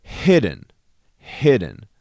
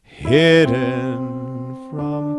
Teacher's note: You put that emphasis on the first beat as well, and you kind of drop away from it.